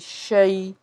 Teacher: میم کو شین سے ملائیں گے، شین جو ہے حرف شجریہ ہے، آواز منہ میں پھیلے گی۔ شین یا زبر شئی ہے، یعنی کہ یا لین کا قاعدہ ہے، معروف طریقے سے اس کو پڑھیں گے شئی